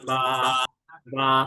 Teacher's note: দুই ঠোঁটের ভিজা জায়গা হইতে উচ্চারিত হয়